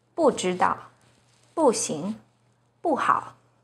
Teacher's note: When 不 is followed by a non-fourth tone, which are the first, second, and third tones, it's pronounced as the fourth tone